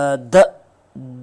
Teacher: tip of द tongue जो है वो टच कर रही है अपर टीथ को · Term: डेंटल